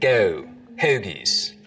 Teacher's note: the goat diphthong starts to move forwards in the mouth so we get go hoagies maybe even a little further forward